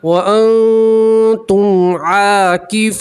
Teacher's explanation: نون ساکن کا اکفا ہے, نون ساکن کی آواز کو ناک میں چھپائیں گے اور ایک الف کے برابر گننا بھی کریں گے